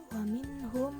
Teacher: mim sukun menghadapi mim bertasydid. Hukumnya idgham mutamasilain.